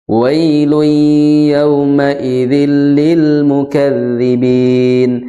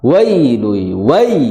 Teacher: huruf layin dibaca dengan dengan tanpa hentakan